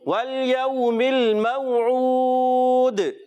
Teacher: دال حرف قلقلہ میں سے ہے, قلقلہ ادا کریں گے, آواز لوٹ کر آئے گی